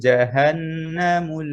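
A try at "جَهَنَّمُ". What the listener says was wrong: এই জাহান্নামের গুন্না আদায় হয় নাই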